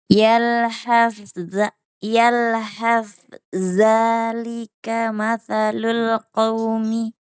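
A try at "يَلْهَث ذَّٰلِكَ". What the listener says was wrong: Nah, langsung dilebur ya. Ini yang dimaksud idgham mutajanisain. Ta lebur ke za. Yalhazza. Yalhazza.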